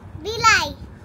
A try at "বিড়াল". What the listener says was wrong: হেট বিলাই না, বলো বিড়াল। র র উচ্চারণ হয় না। বিল্ডিং এর ড আর বিড়ালের ড ওইটা উচ্চারণ করতে পারে না।